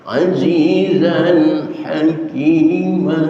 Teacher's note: Azizan tanwin ketemu ha, itu hukumnya idhar. Idhar artinya jelas, maka jelaskan suara tanwinnya zan, jangan dibaca zam dengan ikhfa, atau jangan dibaca zam dengan idgham, tapi idharkan azizan hakim, dan jangan ada penahanan seperti dibaca azizan, tapi tidak ditahan.